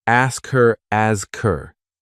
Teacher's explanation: The disappearing H. In fast speech, little words like him, her, and his often lose their H sound.